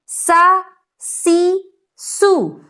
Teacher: سین جب میں بولوں گی تو آپ سبھی غور کیجئے کہ آواز سیٹی کی طرح نکلے گی